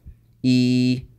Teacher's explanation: the Ya Madiyah, it is pronounced from the Jawf